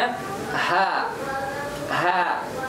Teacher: ini merupakan tamat Hamzah yang kedua huruf ha Iya dimana letaknya di pangkal tenggorokan bagian depan